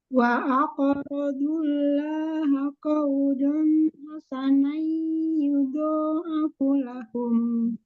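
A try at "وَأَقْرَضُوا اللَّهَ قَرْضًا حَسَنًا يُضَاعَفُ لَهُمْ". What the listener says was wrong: Qawdon, qordon. Wa aqradullaha qordon hasana. tadi bilang tebal kan? Tebal kan? Dullaha. Tebalkan dodnya. Pendek fu-nya. Yudha'afu lahum.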